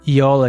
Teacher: Perceba que a sílaba tônica está no O.